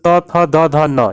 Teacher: जब इनका उच्चारण करते हैं तो जिह्वा जो है दांत को टच करती है। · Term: दंत्य